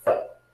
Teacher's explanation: Ela é transliterada como um E no português, porém nós temos que tomar um cuidado quanto à pronúncia dessa letra. Ela tem um som de E, um som mais aberto e mais curto